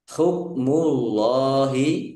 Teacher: Hukmullahi Allahnya dibaca tebal karena harakat di depannya domah